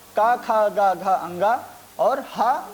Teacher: का, खा, गा, घा, अंगा और हा तथा विसर्ग, इनका उच्चारण स्थान कंठ होता है, तो इनको कंठ भी कहा जाता है, जैसा कि हमने पहले भी स्पष्ट किया है।